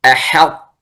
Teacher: أحط تنظر الحاء بعدها طاء فترقق الحاء وتفخم الطاء